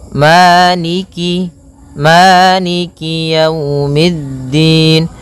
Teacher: Jadi kemudian kasrahnya juga disempurnakan, jangan sampai dibaca dengan e, tapi dia i. Maliki, maliki yaumiddin.